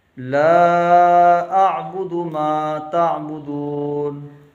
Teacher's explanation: لام کے ساتھ الف بھی ہے اور مد بھی ہے، کھینچ کے پڑھیں گے۔ اعبدو کو جھٹکے سے عین نکالنا ہے، کیونکہ حمزہ عین سے جب ملے گا تو جھٹکا پیدا ہوتا ہے